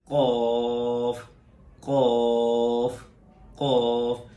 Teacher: زبان کی جڑ اور اوپر کا وہ تالو جو نرم حصہ ہے اس سے یہ قاف نکلتا ہے